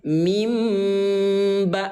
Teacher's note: Mengganti suara nun mati ayah bun menjadi suara mim ya. Atau secara sederhana mengganti suara N menjadi suara M. Artinya tadi dibaca N min ba, sekarang berubah menjadi mim ba atau dibaca M. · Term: iqlab